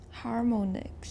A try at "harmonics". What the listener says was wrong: Your stress was fine the first time. Harmonics. But how do we usually pronounce an O in isolation? It's got no final silent E, and it's not part of a digraph. It's not like OA, for example.